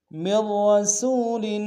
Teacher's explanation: وما ارسلنا من رسول، من رسول، میم کو ملائیں گے، مید، پہلا را باریک ہوگا، دوسرا را کے اوپر تشدید زور دیں گے اور موٹا ادا کریں گے، سین کو واو کے سامنے لائیں گے، واو لین بغیر کھینچے پڑیں گے۔